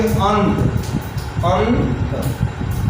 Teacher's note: अनुस्वार का उच्चारण जो होता है वह नाक से किया जाता है।